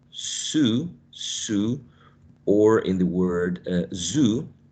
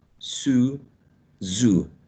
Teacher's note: You have two sounds that are very similar, but one of them is voiceless and the other one is voiced. And both of them are, in terms of place of articulation, are alveolar.